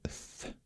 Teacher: this was the interdental fricative again, but this is the unvoiced version